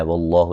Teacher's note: لفظ اللہ کو موٹا ادا کریں گے، اس سے پہلے زبر ہے